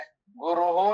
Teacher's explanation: ನಮ್ಗೆ ಗುರು ಎಂಬಲ್ಲಿ ವಿಸರ್ಗದ ಬದಲಿಗೆ ಶಕಾರ ಒಟ್ಟಿಗೆ ಇರಬೇಕಾದ್ರೆ ಶಕಾರ ಪ್ರಯೋಗ ಮಾಡಬೇಕಂತ ನಿಯಮ. ಬಿಡಿಸಿ ಬಿಡಿಸಿ ಹೇಳ್ತೀರಾದ್ರೆ ಗುರುಹು ಅಂತ ವಿಸರ್ಗ ಮಾಡೋದು, ಇಲ್ಲಿ ಶಕಾರ ಬದಲಿಗೆ ವಿಸರ್ಗ ಬರ್ತದೆ